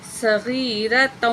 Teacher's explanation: سواد کو موٹا کر کے پڑھیں گے